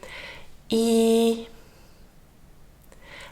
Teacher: the inside of the mouth is going to be quite tense with the tip of the tongue pushing forwards a little bit inside the mouth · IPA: /iː/